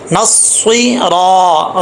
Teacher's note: را کے آگے الف ہے، اس کو موٹا پڑھنا ہے، زبر ہے، را طل۔